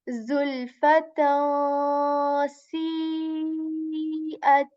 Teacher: Because I'm hiding the sound of noon sakin hidden in this tanween, and I'm saying tan. And there's automatically a nasal sound when I'm hiding as well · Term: ikhfa